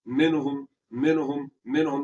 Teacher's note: نون ساکن کے بعد ہا آ گیا جو کہ حروف ہلکی میں سے ہے، تو یہاں پر غنہ نہیں ہوگا